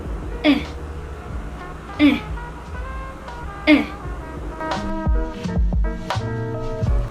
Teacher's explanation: the letter E is located in the front closed mid, which sounds like eh, eh, eh.